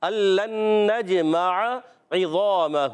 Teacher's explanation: ادغام یرملون مع الغنہ، ادغام یرملون مع الغنہ ہوگا، نون کو جیم سے ملانا ہے، جیم میں قلقلہ ہوگا، آواز لوٹ کر آئے گی، میم پر زبر، عین پر زبر، حرکات کو نہیں کھینچنا۔